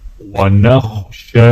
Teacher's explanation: شین کے اوپر کھڑا زبر ہے، ایک الف کے برابر کھینچیں گے